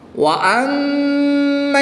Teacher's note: میم مشدد میں غنہ کر کے پڑھیں گے